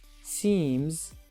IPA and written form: siːmz (seams)